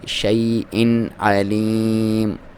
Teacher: حمزہ کی علیحدہ ساؤنڈ آئے، عین کی علیحدہ، آپ نے عین اور حمزہ کی ساؤنڈ کو مکس نہیں کرنا